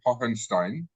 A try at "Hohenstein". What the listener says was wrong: Hohenstein. don't really pronounce the second H, you just Hohen.